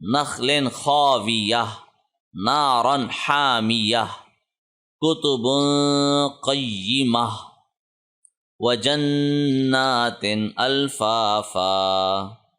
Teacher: اب گول تا کے اوپر جو وقف ہے اس صورت میں یہ ہا میں تبدیل ہو جائے گا، اس پہ کوئی بھی سائن آئے گا وہ ہا میں تبدیل ہوگا.